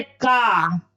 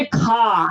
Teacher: खा बोलने में ज्यादा हवा की जरूरत पड़ती है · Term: महाप्राण